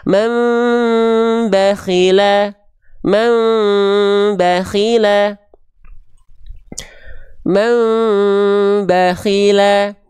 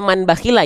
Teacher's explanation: bunyi n-nya dibalik ke bunyi mem disamarkan dan dengungkan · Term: iqlab